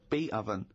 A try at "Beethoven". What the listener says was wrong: no you said you said beat again